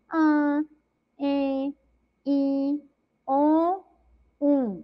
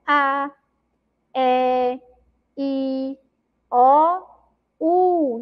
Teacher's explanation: todas essas sílabas aí agora tem um som, né, que a gente chama de nasal. Ele vai passar pelo nosso nariz